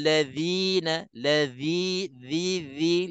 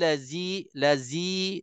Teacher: lidah kita ni tersentuh gigi depan atas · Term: keluar lidah